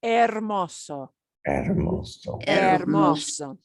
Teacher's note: And notice we don't pronounce the H.